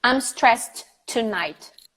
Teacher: The T from stressed and the T from tonight become one sound.